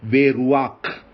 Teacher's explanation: Hebrew tends to put a short A sound which is inserted between the vowel and the guttural. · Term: furtive patak